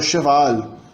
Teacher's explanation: Características mais fortes do francês é a palatalização, como eu disse tanto do valão quanto do francês, a palatalização das oclusivas iniciais, especialmente as velares. As dentais não, mas as velares sim.